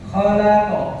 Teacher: Jadi memantulkannya tidak dengan cara menabrakkan sehingga ada kesan hamzah sukun atau suara pantulan itu terhenti, tidak. Ya, melainkan tidak terhenti atau seakan-akan atau condong pada harokat fathah atau qafiyah.